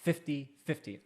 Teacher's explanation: the accent's on the first syllable for 50 and 15 and it's kind of a trail off